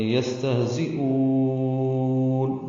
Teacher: یستہزئون سین ساکن اور ہا ساکن، ان دونوں میں ہمس ہے، سانس کی آواز جاری رہے گی. زا تیز صفیر کی آواز سے ادا کریں گے اور حمزہ کو وقفاً لمبا کریں گے.